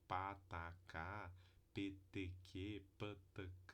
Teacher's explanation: são as três oclusivas surdas porque se produzir só consoante não tem vibração das cordas vocais · uma obstrução completa do fluxo de ar com uma explosão repentina ao soltar os articuladores tá então tem fechamento completo do fluxo de ar no trato